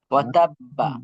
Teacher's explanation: যেহেতু আমরা যে মা হরফে আমরা থামছি, এখানে দেখেন বাতে কিন্তু আমরা থামছি, অক্ফ অক্ফ করছি, আর বায়ের উপরে জি, তাসদিদ আছে। তাসদিদওয়ালা হরফে যদি আমরা অক্ফ করি, তাহলে হালকা একটু ধাক্কা হয়